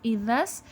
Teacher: زبان کی نوک کے اوپر والے حصے اور اوپر والے دانتوں کے اندرونی کناروں سے زال ادا ہوتا ہے